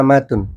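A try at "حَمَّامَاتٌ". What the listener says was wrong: Panjang. Mimnya panjang no, kan alif ta. Mimnya panjang, dua-duanya panjang berarti. Iya, alif tak kan? Hammamatun.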